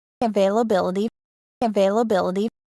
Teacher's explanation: the primary stress is on the fourth syllable but there is secondary stress on the second syllable